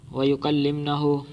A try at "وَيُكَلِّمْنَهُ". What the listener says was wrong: واہ ہے کیوں واہ پڑھی آپ نے آگے